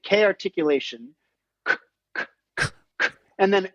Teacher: after the K we have to roll air through the teeth shaped with the tongue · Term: Rim shot